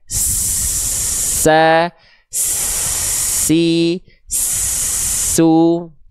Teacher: huruf Sin ketika kita Keluarkan suaranya dia mengalir juga nafasnya tuh Ya deras mengalirnya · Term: sifat hams